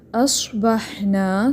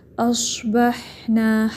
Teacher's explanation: سوات ہمیں معلوم ہے کہ یہ پر ہے، لیکن اس کی وجہ سے حمزہ موٹا نہیں رکھنا، ٹھیک ہے. اصبحنا اس طرح نہیں پڑھنا، سوات پر ہے، ٹھیک ہے. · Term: حمزہ باریک